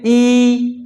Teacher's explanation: हम बोलते हैं ई, तो हमारा पूरा का पूरा मुंह बंद हो जाता है, बिल्कुल जरा सा खुलता है, लगभग बिल्कुल ना के बराबर ही खुलता है। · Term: समृद्ध स्वर